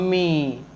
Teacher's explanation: जैसे अगर हम बोलते हैं किसी को बुलाना है मम्मी, तो ई लास्ट में जो आता है बहुत लंबे समय तक, ये सबसे ज़्यादा समय तक बोला जाता है, तो ये प्लुत स्वर है।